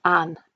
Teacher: nd becomes n, so an instead of and